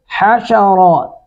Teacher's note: حا کو حلق سے ادا کریں گے